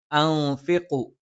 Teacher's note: ന നാവിൻ്റെ അറ്റം മേലെ മുൻപല്ലിൻ്റെ മോണയിലാണ്. ഫ മേലെ മുൻപല്ലിൻ്റെ താഴ്ഭാഗം, താഴെ ചുണ്ടിൻ്റെ പള്ളയിൽ. ഖ നാവിൻ്റെ ആരംഭം മേലെ അണ്ണാക്കിൽ.